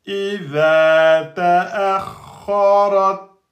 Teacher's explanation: Ta, shda, on bloque et ensuite on lâche. Donc il n'y a pas de deux temps.